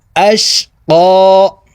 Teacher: এই কফকে উপরের দিকে ধাবিত করে এক আলিফ টেনে পড়তে হবে।